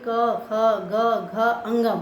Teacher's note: बच्चों यहाँ पे कंठ स्पर्श हो रहा है, इसका उच्चारण स्थान है कंठ।